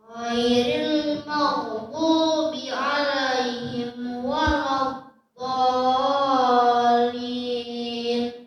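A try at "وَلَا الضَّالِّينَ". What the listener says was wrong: Nah, gini bacanya. Waladdallin. Nah, lamnya pakai tasydid. Waladdallin.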